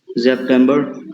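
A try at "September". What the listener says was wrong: सेप्टबर तुम सेप्टबर आर नहीं बोला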